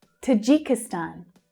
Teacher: the main stress here, like all of the other stans, is on the last syllable, but we can also hear the first syllable clearly.